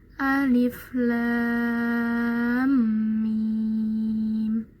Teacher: mad lazim muttaqal harfi, panjangnya 6 harokat juga